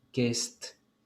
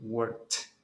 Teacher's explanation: No hay vibración, entonces significa que lo va a pronunciar como una T.